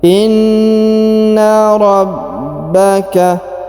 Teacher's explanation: huruf ba ditahan dan ditekan karena terdapat tanda tasdid.